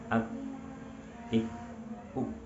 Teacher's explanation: sifat huruf kaf memiliki sifat syiddah, artinya suaranya tertahan. Ak, ik, uk tidak berjalan.